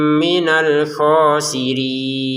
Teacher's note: Kho-nya panjang 2 harokat, untuk rinnya 6 harokat.